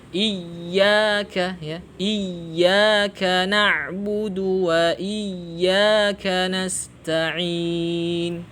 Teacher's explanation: Yang betul hamzahnya pendek, kemudian ya-nya bertasydid. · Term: ya tasydid